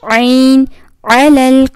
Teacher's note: فانصرنا علل، عین کی ساؤنڈ نکالیں گے، عین حلق کے درمیانی حصے سے